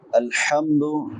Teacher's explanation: हा छोटी हा है, वुस्ते हलक से हलक के दरमियान से अदा होती है।